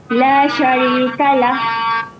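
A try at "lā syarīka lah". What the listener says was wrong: Okey, memang pendek saja. La syarika lah. Jangan panjangkan ya, jangan la syarika lah. Ada yang tersilap. Diingat semua yang bacaan akhir bacaan panjang ya.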